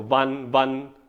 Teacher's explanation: ਜਦ ਸ਼ੁਰੂ ਹੀ ਕਰਨਾ ਹੈ ਵਾਵੇ 'ਚ ਆਪਾਂ ਦੇ ਦੰਦ ਤੇ ਜਿਹੜੇ ਲਿਪਸ ਹਿਲ ਜਾਣੇ